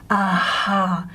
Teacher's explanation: So this is where the vocal folds are breathy voiced, they're vibrating, but there's a lot of air escaping at the same time